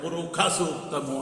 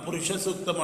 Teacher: వైదిక సంస్కృతంలో శుక్లయజుర్వేదములో షణ్ముఖ శకారం, మూర్ధన్య శకారం ఏదైతే ఉందో అది మహాప్రాణ ఖకారంగా పలకాలి. అట్లే వాళ్ళు మనం పురుష సూక్తము అంటే వాళ్ళు పురుఖ సూక్తము అంటాడు, అనాలి కూడా, అదే వాళ్ళ నియమం.